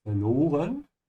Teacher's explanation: Remember to pronounce the V like an F, yeah, verloren. And also notice how I am stretching the O a little bit when I say verloren